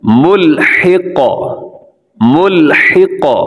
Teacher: قاف کو قلقلہ کرنا ہے یعنی ہلانا ہے